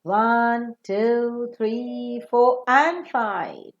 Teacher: five the last counted one will receive the following term and the earlier ones will receive the rising tone